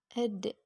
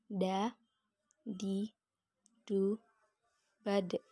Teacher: Dalam keadaan mati, huruf da terdengar suaranya memantul.